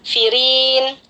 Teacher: ada ro berharokat kasroh di sini kita baca tipis ya